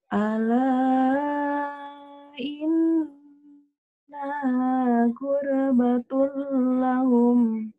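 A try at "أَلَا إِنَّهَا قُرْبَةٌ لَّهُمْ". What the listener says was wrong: Bagus.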